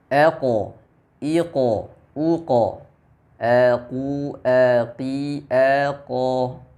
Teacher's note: Jadi pantulannya mengarah ke bunyi o tebal. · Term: suara pantulan